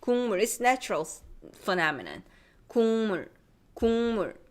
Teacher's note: When we are saying a nasal sound, our nasal cavity is already closing to make that sound. So that's why it makes the previous consonant also nasalized.